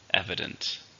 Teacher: 3 syllables stresses on the first